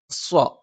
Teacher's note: നാവിന്റെ കൂർത്ത അറ്റത്തിന്റെ മുകൾഭാഗം രണ്ടു വരി മുൻപല്ലുകൾക്കിടയിൽ പിന്നിലായിട്ട് വെക്കുകയും അതോടൊപ്പം നാവിന്റെ മധ്യഭാഗം മുകളിലേക്ക് ഉയരും പക്ഷേ ജ പോലെ നാവിന്റെ മധ്യഭാഗം മുകളിൽ സ്പർശിക്കില്ല പക്ഷെ മുകളിലേക്ക് ഉയരും രി